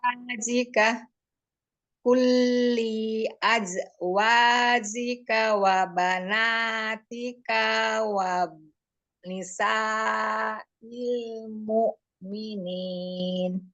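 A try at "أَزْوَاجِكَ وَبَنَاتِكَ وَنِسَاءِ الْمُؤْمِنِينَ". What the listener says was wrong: Nah, itu masih ada itu ya, yang harokat pendeknya dipanjang-panjangkan ya, diperhatikan lagi. ya sukanya pendek kan. Kulli, linya juga pendek. Nah, itu karena apa? Hamzanya berharokat itu.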